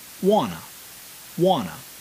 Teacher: by linking the two words together and by reducing the amount of stress or emphasis placed on the letter T, wanta becomes wanna